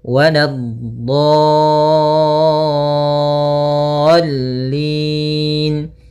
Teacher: Kemudian dha-nya 6 harakat dulu baru masuk ke lam. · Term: mad lazim musaqqal kalimi